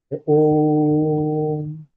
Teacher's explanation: इस ध्वनि को तीन मात्रा के बराबर खींचना है। जब हम उच्चारण करें तो तीन मात्रा के बराबर समय देना है। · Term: प्लुत स्वर